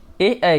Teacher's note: अगर बात करें ए की, तो इसका उच्चारण होता है कंठ तालव्य से